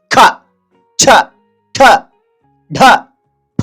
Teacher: ಹೆಚ್ಚು ಉಸಿರಿನಿಂದ ಉಚ್ಚರಿಸಲ್ಪಡುವ ವ್ಯಂಜನಾಕ್ಷರಗಳಿಗೆ ನಾವು ಮಹಾಪ್ರಾಣಾಕ್ಷರಗಳು ಅಂತ ಕರೀತೇವೆ ಖ ಛ ಠ ಡ ಫ ಅಂತಕಂತದ್ದು ಹೆಚ್ಚು ಉಸರನ್ನು ಕೊಟ್ಟು ಉಚ್ಚಾರಣೆ ಮಾಡ್ತೇವೆ